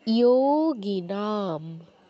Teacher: যোগিনাম, ইয়োতে দীর্ঘ, নাতে দীর্ঘ, ম অর্ধ উচ্চারণ, যেহেতু ময়ের নিচে হসন্ত আছে। স্ক্যান করায় হসন্তটা হয়তো বোঝা যাচ্ছে না, কিন্তু এখানে একটা হসন্ত আছে।